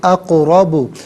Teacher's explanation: یہاں پر قاف ساکن ہے، قلقلہ کیا جائے گا ، را پر زبر ہے، را کو پر کر کے پڑھیں · را پر زبر ہے، را کو پر کر کے پڑھیں گے